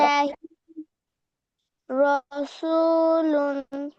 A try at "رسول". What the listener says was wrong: র র র জবর র, হ্যাঁ, রু না। রসুলুন, রসুলুন।